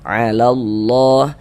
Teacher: Tanda harokat fathah berdiri yang berbentuk alif kecil seperti ini menandakan huruf kalau di atasnya ada tanda seperti ini dibaca panjang. Ini lafaz Allah dibaca panjang. Mad tabi'i panjangnya 2 harokat.